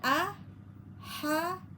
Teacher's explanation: hati-hati h-nya ha tengah tenggorokan ya. harus bisa membedakan pada ha tengah tenggorokan ya.